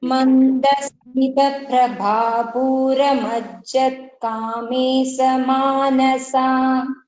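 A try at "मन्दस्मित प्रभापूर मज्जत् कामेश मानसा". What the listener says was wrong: The shakara in kamesha should be sha. It is not should not sound like the. And also when we are chanting mandasmita prabhapura, mandasmita prabhapura. So if you see after the and that the, so you can just observe the pronunciation there. Mandasmita prabhapura.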